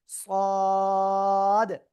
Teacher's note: জিহ্বার আগা, সামনের নিচে দুই দাঁতের পেট ও আগার সাথে লাগিয়ে একটু মোটা আওয়াজে আমরা উচ্চারণ করেছিলাম